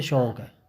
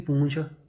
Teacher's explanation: ਮਲਵਈ ਦੇ ਵਿੱਚ ਨਾਸਕਤਾ ਜ਼ਿਆਦਾ ਆ ਹੋਰ ਉਪਭਾਸ਼ਾਵਾਂ ਨਾਲੋਂ, ਅਤੇ ਇਹ ਜਿਹੜੇ ਦੀਰਘ ਸਵਰ ਆ ਇਹ ਵੀ ਨਾਸਕੀ ਹੀ ਕਰ ਦਿੰਦੇ ਆ। ਠੀਕ ਆ, ਮਲਵਈ ਦੇ ਵਿੱਚ ਜਿਵੇਂ ਸ਼ੌਕ ਹੁੰਦਾ ਇਸ ਨੂੰ ਬੋਲਣਗੇ ਸ਼ੌਂਕ ਹੈ।